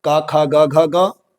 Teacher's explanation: यह सारे जो नाम है ये कंठ से उच्चारित होते हैं